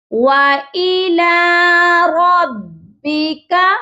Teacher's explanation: را کو اپنے موٹا پڑھنے ہیں